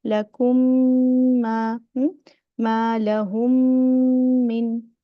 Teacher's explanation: First meme make gunna. The second meme make gunna. It is the highest level of gunna because it comes with the shadda.